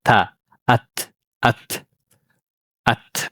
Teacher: ከምላሳችን ጫፍ ነው የምትወጣው። ማጥራፍ ተነያ ለብሊያ ከላይኛው ጥርሳችን ጫፍ ጋር ማለት ነው። ያኒ ታአት ያኒ የምላሳችን ጫፍና የፊት ለፊት ጥርሳችን ጫፍ ይገናኛሉ ማለት · ያኒ የምላሳችን ጫፍና የፊት ለፊት ጥርሳችን ጫፍ ይገናኛሉ ማለት ነው።